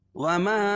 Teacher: اس کو مد جائز بھی بولتے ہیں، اور اس میں 2 الف کے برابر کھینچ کے پڑھیں گے، اس میں توسط ہے اور قصر بھی جائز ہے۔ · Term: مد منفصل